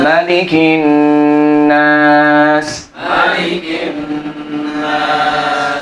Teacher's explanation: ini sepakat semua qiraat tidak panjang mimnya, tidak Malikin Nas, nggak boleh, pendek. Semua qiraat nggak ada yang panjang.